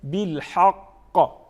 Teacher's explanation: قاف آخر میں آ جاتا ہے تو اس میں ہم کیا کرتے ہیں؟ قلقلہ کرتے ہیں, کیونکہ یہ حروف قلقلہ میں سے ہیں, تو اس کی ایک منفرد انداز ہوتی ہیں پڑھنے کی.